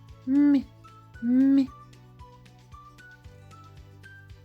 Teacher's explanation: це також приголосний дзвінкий але він є м'який